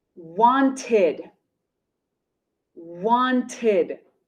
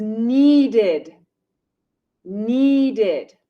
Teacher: if we have a base verb ending in t or d the sound of e d is id